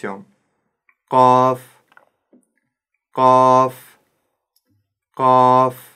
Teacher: буква каф твёрдая при её произнесении задействован корень языка который Старайтесь не вытягивать губы Вперёд ко потому что это искажает